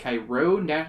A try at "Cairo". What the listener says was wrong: Cairo. Enunciation on the wrong syllable.